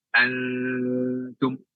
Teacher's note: mengucapkan antum aja itu ada idghamnya, ditahan 3 harokat.